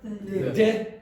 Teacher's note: that TH sound in Irish English very often becomes an aspirated D